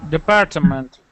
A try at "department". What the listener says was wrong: Too many syllables. Department. Department.